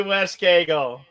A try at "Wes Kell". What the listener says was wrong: It's Wes Kell. You don't pronounce the G.